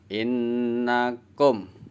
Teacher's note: Kum, karena mim sukun itu bunyinya M, jadi kum langsung berhenti seperti dipotong. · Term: Mim sukunnya dibaca jelas